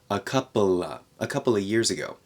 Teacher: we take out the v in of